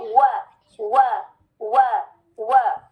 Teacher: वाव के लिए क्या याद रखेंगे? Complete rounding